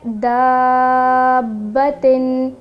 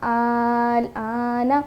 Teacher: تو یاد رہے حروف مدہ کے بعد جب مشدد لیٹر یا سکون آ جائے تو وہاں پر مد لازم ہوگا اور ہم اس کو 6 حرکت یعنی کہ 3 الف کی مقدار اس کو ہم کھینچ کے پڑھیں گے